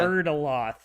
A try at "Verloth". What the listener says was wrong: No, it's a Verloth. It's a Verloth. The D is silent. I know the D is silent.